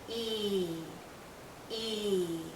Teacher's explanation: is being pulled out because it's a long sound e e our tongue is generally high our mouth is closed again our lips are pulled and there's a lot of tension in this vowel sound tension means tight you feel it hearing your cheeks and a · Our lips are very spread, very pulled out, and this is a long vowel sound. So think of your lips being pulled out like the vowel sound is being pulled out because it's a long sound.